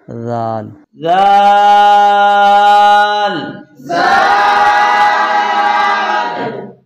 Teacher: زبان کی نوک کو سامنے والے دانتوں کے اندرونی کناروں سے ملانے سے ذال ادا ہوگا